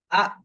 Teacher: আমরা যে আ উচ্চারণটা করব মনে করেন একটা জায়গায় ধাক্কা লাগবে, মানে একটা জায়গায় হামজা গিয়ে আমরা থেমে যাব। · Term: হামজা জবর আ